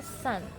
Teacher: merupakan bunyi voiceless atau tidak bergetar, dan termasuk dalam alveolar, di mana lidah menyentuh gigi atas, langit-langit atas, gigi langit-langit atas, dan masuk ke dalam ranah frikatif.